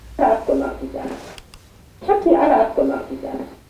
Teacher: the add-on is totally integrated into the preceding intonation unit. Yeah, and it's flat. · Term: fully integrated add-on